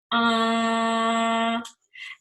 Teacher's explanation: the majority of the air stream has to come through the nasal passage way rather than the mouth cavity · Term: nasal sound